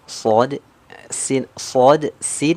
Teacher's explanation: ini kan makhrajnya sama tempat keluarnya sama sama-sama ujung lidah sejajar dengan gigi seri bawah yang membedakan yaitu sifatnya ataupun cara mengeluarkan hurufnyaah huruf Shad dia